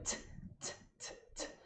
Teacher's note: O T sozinho é como se fosse um TS